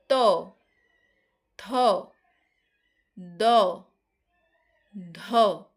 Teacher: আমাদের জীভের ডগাটা আমাদের উপরের পাটির দাঁতের সঙ্গে গিয়ে লাগছে। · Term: দন্ত ব্যঞ্জন